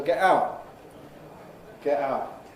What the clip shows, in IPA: ˈgeʔ ˈaʊʔ